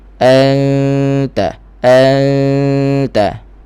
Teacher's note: hampir kepada makhraj ta tapi tak jejak lagi lah. Okey, suara di hidung ada, suara di mulut pun ada sikit. · Okey, dan gunnah tu, ikhfa tu di sisi huruf ta, nipis, dan bunyinya nipis. Kerana huruf ta nipis, jadi bunyi dengung kena nipis. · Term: ikhfa hakiki